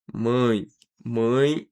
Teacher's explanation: você diz mãe, mãe, o som sai pelo nariz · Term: nasalização